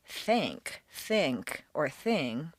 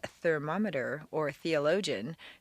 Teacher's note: The strong words such as thank, think, or thing as well as long or unusual words such as thermometer or theologian stay unvoiced.